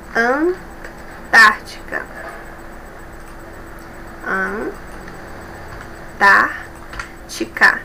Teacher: Um, dois, três. A terceira sílaba é mais forte de trás para frente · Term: antepenúltima